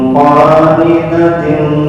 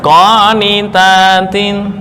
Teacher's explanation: Ta panjang. Qanitatin, 1 alif atau 2 harokat